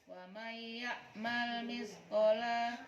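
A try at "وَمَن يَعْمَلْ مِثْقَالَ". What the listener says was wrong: Qala. Qanya panjang.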